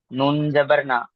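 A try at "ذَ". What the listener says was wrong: নুন নয়, ওটা জাল আছে।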